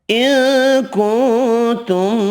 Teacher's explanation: दो नून साकिन है, दोनों पर इख्फ़ा होगा